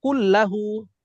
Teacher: যেমন এখানে দেখলাম কুল্লাহু, নুন সাকিনের পর লাম আসছে, নুন আর উচ্চারণ হয় নাই, আমরা ডিরেক্ট মিলাই পড়ছি কাফ আর লামকে এবং গুণনা করি নাই। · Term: ইদগাম